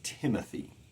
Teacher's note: Tim is the stress syllable followed by two unstressed syllables